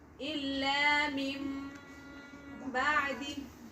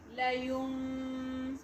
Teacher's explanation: And you can change the sound of Noon into Mim. Layum. But then very softly. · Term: Iqlab